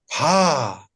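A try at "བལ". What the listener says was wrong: Softer, with the ha touch. I don't say this ba because when there is a prefix, the sound changes to ba.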